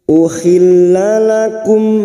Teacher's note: Uhilla lakum, mim sukun bertemu shad idhar safawi, mim sukun dibaca jelas tanpa mendengung